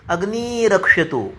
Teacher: एक र गायब होने के कारण उसके पहले का जो स्वर होता है वो दीर्घ हो जाता है। तो अग्नि ही इसमें ई ह्रस्व है, लेकिन जब रेफे परे रेफ लोपस्यात, ये रो री से एक र निकल जाता है तो ये ह्रस्व ई का दीर्घ ई होता है।